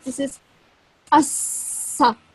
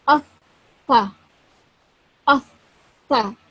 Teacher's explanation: The tip of the tongue slightly comes out of the mouth and softly touches the upper teeth. Air should escape when pronounced correctly. Okay, so the air should also escape when you pronounce this letter, when your teeth are softly touching the tongue.